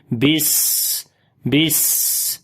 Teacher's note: بسم اللہ، با کو سین کے ساتھ ملائیں گے۔ سین کے اندر صفت صفیر اور صفت ہمس یعنی سیٹی کی آواز، اور ساتھ میں سانس کو بھی ہم نے جاری کرنا ہے۔